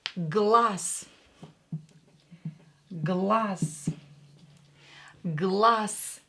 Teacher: voiced consonant like Z located at the end of the word will be pronounced as S, will become unvoiced. And Z voiced will become unvoiced S.